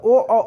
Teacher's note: अब आ गए ए कंठ तथा तालु, और ओ मतलब ओ ओठ से भी बोला जाता है और कंठ से भी बोला जाता है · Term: कंठोष्ठ